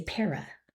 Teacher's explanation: we would expect that to say par, and then the A is being schwad on the end, we say para.